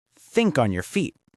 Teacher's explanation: The stress is on think and feet.